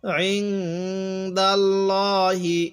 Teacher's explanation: আর এই নুন সাকিনের পরে যদি ইজহারের যে 6টি হরফ আছে, হামজাহা, আইনহা, গইন, খ, এই 6টি হরফ যদি এই নুন সাকিনের পরে আসে, তাহলে ওই নুন সাকিনের মধ্যে আমরা স্পষ্ট করে পড়ব। তাহলে এই নুন সাকিনের পরে দালটি হলো ইকফার হরফ, এই জন্য আমরা এই নুন সাকিনের মধ্যে গুনাহ করব। তাহলে ইং, দাল লাগবে এই লামের সাথে দাল, লাম খারাজ বল ল, হাজির হি, ইং দাল্লাহি।